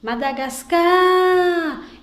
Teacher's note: Então, a sílaba que se estender mais é a sílaba tônica. Então, quando eu digo Madagascar, sem o acento, a sílaba tônica vai ser o car. A palavra vai deixar de ser paroxítona e vai ser oxítona, ok?